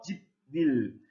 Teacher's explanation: 니은 때문에 비읍이 어떻게 되냐면은 예, 미음으로 바뀝니다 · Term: 비음화 현상